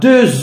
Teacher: X se change en Z sous l'emprise de la liaison.